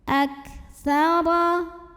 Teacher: Huruf kaf belakangnya jangan tertinggal hamznya ya, karena kaf ini salah satu sifatnya dari segi udara keluar angin.